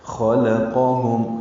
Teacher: ذال نرمی سے پڑھیں گے، ذی یا مدہ ہے. خلقہم میں خا اور قاف پر ہیں، بیچ میں لام باریک ہے